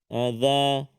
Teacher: hujung lidah kita keluar sedikit kan hujung lidah keluar sikit